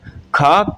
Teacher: कंठ महाप्राण अघोष है